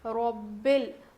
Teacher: للہ پڑھیں گے، اور را کو موٹا پڑھیں گے